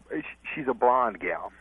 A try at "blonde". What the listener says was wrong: It sounds like he's saying Bond.